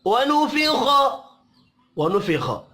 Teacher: खा हुरूफ मुस्तअलिया है, पुर पढ़ा जाएगा।